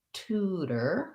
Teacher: where we would use a flap t because it's between two vowels and followed by an unstressed syllable